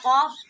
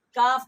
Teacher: یہ موٹا قاف سنگڑی سے ادا ہوگا قاف، اور اس سے تھوڑا سا منہ کی طرف ہٹ کے کاف بریک ادا ہوگا